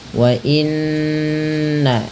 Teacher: cara membacanya menahan bunyi suara n-nya atau bunyi suara nun-nya sepanjang 2 harakat. Wa inna baru dilepas ya. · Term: bacaan guna